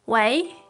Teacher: But in fact, in normal speech, people use the second tone.